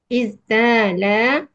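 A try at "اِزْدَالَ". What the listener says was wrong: Sebab itu isdala bukan istala. Taknya menjadi dal. Karena huruf ta dihadapi oleh zai. Izdi. Izdi. Izdala, yazdalu.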